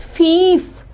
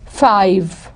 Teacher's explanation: in the great vowel shift, the high front vowel becomes a diphthong